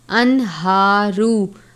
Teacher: پڑھتے ہیں اسی طرح ہا کھڑی زبر ہا پڑھیں گے، انہارو، را کے اوپر پیش ہے اس لیے را کو پر پڑھتے ہیں